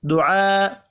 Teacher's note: دعاء بڑی مد کو 5 الف کے برابر کھینچ کر پڑھنا ہے